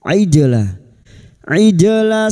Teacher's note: jim sukun yang mati asli di tengah kalimat qalqalah sugro jangan lupa dipantulkan